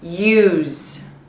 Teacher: Even though this is an S, I see an S, the reality is as a verb, use is more like a Z sound. So it vibrates, meaning if it vibrates, I need to use the D sound.